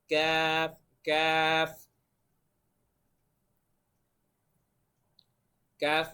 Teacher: জিহ্বার গোড়া থেকে একটু আগে বাড়াইয়া তার বরাবর উপরের তালুর সঙ্গে লাগাইয়া মধ্যখান পেঁচানো কাফ, এভাবে।